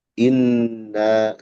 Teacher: kalau kita berhenti di inna dibacanya dua harakat saja. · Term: mad munfasil